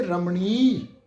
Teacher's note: ਬਿਹਾਰੀ ਦੀ ਮਾਤਰਾ ਹੈ ਨਾ ਜੀ ਇਹਨੂੰ ਅਸੀਂ ਲੰਮਾ ਕਰਕੇ ਉਚਾਰਨ ਕਰਾਂਗੇ